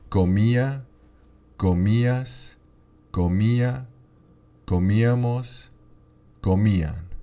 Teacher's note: when we get to the I, we're going to accentuate it and our voice is going to go up. · hopefully you heard my voice go up when I got to the I for the ER and IR endings.